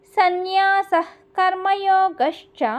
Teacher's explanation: సన్యాస అక్కడ కాకి ముందు వచ్చే విసర్గకి ఆఫ్ విసర్గ పలకాలి. మనము హెచ్ అని పెట్టుకోండి, లేకపోతే ఇహ్ అని పెట్టుకోండి.